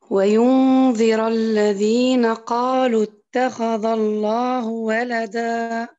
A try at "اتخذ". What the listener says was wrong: ممتازة، لكن فقط قولي اتخذ. اتخذ. ما شاء الله في النبر ممتازة. أنت تفخمين الذال فقط.